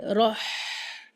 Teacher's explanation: راہ نرمی کے ساتھ درمیانی حلق سے